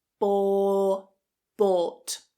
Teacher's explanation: It's not, it's a long /ɔː/ vowel. The same vowel that's in law, for, door, court, etc. Keep it a long vowel.= Bou, bought.